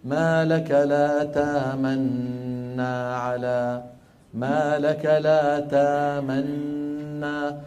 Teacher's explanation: فيأتي بنون مشددة لا روم ولا إشمام معها. هذا المحض، المحض يعني المجرد. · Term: الإدغام المحض